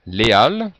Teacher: il n'y a pas de liaison